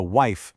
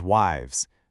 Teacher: that sharp F sound softens into a V sound in the plural. So wife becomes wives, leaf becomes leaves.